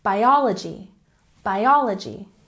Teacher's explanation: Biology, stress the second syllable.